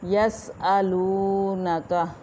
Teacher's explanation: سین کے اوپر سیٹی کی آواز حروف صفیریہ میں سے ہے اور اس کو باریک بھی ادا کیا جائے گا۔ واو ساکن لام کے اوپر پیش، واو مدہ، اس کو ایک الف کے برابر لمبا کریں گے اور کاف یہ باریک ہے۔